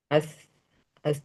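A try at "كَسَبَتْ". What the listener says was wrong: Jangan as ya. Nggak boleh as. Ats.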